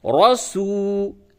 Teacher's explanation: را زبر را، سین واو پیش سو، رسو، را کو پر کیجئے اور واو مدہ ہے، تھوڑا سا اس کو کھینچ کر کے پڑھیے